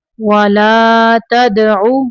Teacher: وَأَنْ أَقِمْ وَجْهَكَ لِلدِّينِ حنیفا ولا تکونن من المشرکین ولا تدع، دال کو قلقلہ کرنا ہے